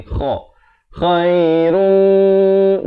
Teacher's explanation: Kha ni pula makhrajnya di hujung kerongkong ni.